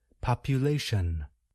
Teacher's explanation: the ending consonant sound n is voiced in other words we can feel our vocal cords move when we produce the sound